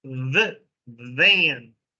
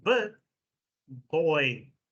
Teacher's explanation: Remember, we have v where the tooth touches the lip.